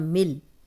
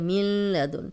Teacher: یہاں نون کی ذرا سی بھی آواز نہیں آنی چاہیے. ملدن، اکثر اسٹوڈنٹ ایسے پڑھ رہے ہوتے ہیں ملدن، تو نون کو نہیں شامل کرنا کیونکہ شد والے حرف سے پیچھے جو جزم ہوتی ہے وہ بالکل پڑھنے میں نہیں آتی.